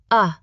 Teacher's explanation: It is the soft uh sound you hear in many unstressed syllables. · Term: schwa